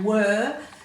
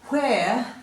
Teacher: Were and where, the easiest way to know and remember whether there's an H in one or not is put your hand over your mouth. If you say were, there's no air and there's no H after the W, but when you say where, there is air after the W